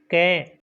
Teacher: अंतर स्पष्ट कैसे करना है कि क को बोलेंगे तो कम श्वास निकलेगी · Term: अलप्राण